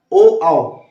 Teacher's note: ठीक है, कंठ प्लस ओष्ठ मतलब ओ आओ, यानी कंठ से भी मतलब आवाज आ रही है, और ओठो जो हमारे जो होंठ है उनको भी उन पे भी प्रभाव पड़ रहा है, वो गोल हो जा रहे हैं। ठीक है, तो दोनों वर्क कर रहे हैं, मतलब कंठ प्लस ओष्ठ, यानी कंठोष्ठ में आएगा ओ आओ।